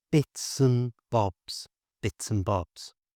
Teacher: Notice how I pronounce the and without the d.